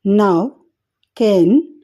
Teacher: there is a complete closure of the air passage in the mouth and the air escapes through the nose. All of these nasal consonant sounds are voiced.